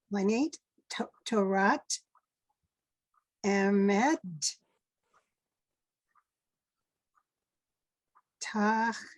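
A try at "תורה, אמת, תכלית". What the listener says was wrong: Yes, very nice.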